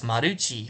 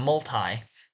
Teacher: they can't do T, so they do chi, so it's maruchi from multi.